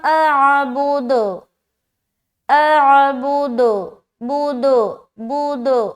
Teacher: अब यहाँ पर देखिए, जब यहाँ पर आप स्टॉप करेंगे तो ये दाल है ना, दाल के ऊपर सुकून लगाएंगे। अब जब दाल के ऊपर सुकून आ गया तो कलकला करना है, और ये कलकला होगा स्ट्रॉन्ग कलकला, क्योंकि यहाँ पर आपने स्टॉप भी करना है और किसी शर्त की बिना पर आप सुकून लगाकर यहाँ पर स्टॉप हो रहे हैं।